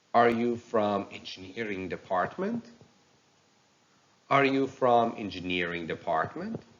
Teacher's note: And at the end, uses yes-no question with rising intonation.